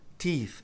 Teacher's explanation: Note que quando a gente tem dois E's em inglês, o som é I. Um I longo, tem até que dar um sorrisinho para pronunciar